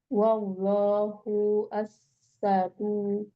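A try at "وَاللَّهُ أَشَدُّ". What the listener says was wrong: asyaddu. Tasdidnya dan ya. Jangan menutup tasdid ya. Asyaddu. Wallahu asyaddu ba'sau wa asyaddu tangkila.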